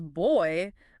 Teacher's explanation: boy which glides from that short o to e. So it's not like you're saying two separate vowel sounds like one after the other. · It's like a glide, a smooth transition from one vowel sound to another all within the same syllable. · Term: dip thongs